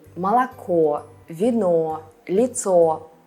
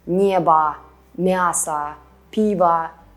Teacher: the last vowel is stressed, so we can hear that it's o, not a